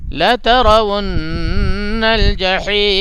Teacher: نون پہ تشدید ہے اس لیے اس پہ غنہ ہوگا